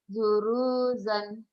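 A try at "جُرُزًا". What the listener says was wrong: jurusan, jurusan, pendek.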